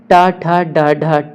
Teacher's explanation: ट वर्ग का उच्चारण स्थान मूर्धा है